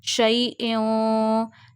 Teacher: you take tanween sound into the nose and you hide the voice of tanween and you stretch up to one finger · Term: ikhfa